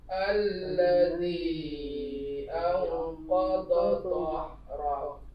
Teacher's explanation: Mad jaiz munfasil, disambut dengan nun mati bertemu dengan qa, itu ikhfa, samar-samar berdengung